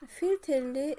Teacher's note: Filterli və orbital sözləri verilib. Filterli sözündə vurğu düşəcək sonuncu hecaya